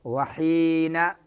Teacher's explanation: یا میں مدہ ہوگا، نون میں غنہ ہی نہیں ہوگا